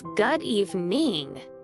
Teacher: Pronounce it as good evening. Stress the first part of evening.